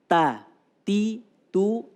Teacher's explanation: punya sifat Hames Hammer itu jari anu nafas kalau di dikeluarkan hurufnya ada aliran nafas yang keluar